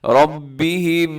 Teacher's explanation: را کے اوپر زبر ہے، را موٹی پڑی جائے گی